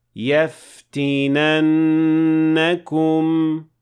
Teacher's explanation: So the noon here has shadda, which means that the first noon is a noon sakina, and the second noon has fatha on it. So when you pronounce the entire word, you have to remember to apply ghunna of two counts